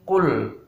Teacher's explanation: Ingat, ini huruf qaf ya, jahar sifatnya jelas. Jadi tidak boleh dibaca dengan angin atau hamas.